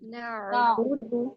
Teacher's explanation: बा और दाल को 1 हरकत के बराबर जी 1 काउंट स्ट्रेच करना है